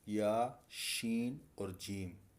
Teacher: یہ زبان کے درمیان سے ادا ہوتے ہیں